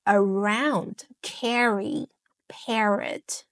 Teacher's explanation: Then I also have the middle R like around, carry, parrot. So these R are more blended in fast speech. So it flows right into the vowels.